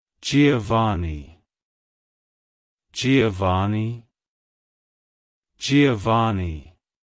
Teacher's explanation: emphasize the o sound in the first syllable and the ah sound in the last syllable the V is pronounced softly almost like a b like hello